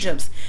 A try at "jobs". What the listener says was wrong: Ah, jobs. So you did not clearly pronounce the vowel in that one syllable word.